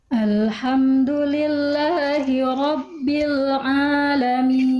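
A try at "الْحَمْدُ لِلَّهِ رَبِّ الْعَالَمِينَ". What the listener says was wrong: kuatkan sedikit lagi ainnya bunda dari Tengah tenggorokanam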